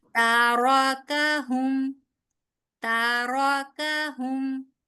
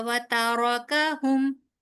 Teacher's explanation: रॉ सिर्फ आप पुर करेंगी, काफ को बारीक रखिए।